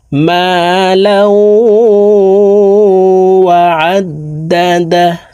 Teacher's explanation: আল্লাযী জামা'a মালাউ, লাউ এখানে ইদগামে বা গুন্না, তানউইনের পর ইদগামে বা গুন্নার হরফ ওয়াও আসছে, এই কারণে এই তানউইনওয়ালা লামটি তাসদীদওয়ালা ওয়ার সাথে গুন্নার সহিত মিলাইয়া পড়ব